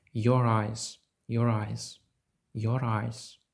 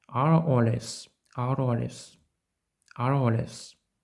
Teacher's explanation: Отже технічно Я з'єдную два голосні звуки разом Your Eyes Your Eyes Your Eyes і ми робимо це за допомогою звука R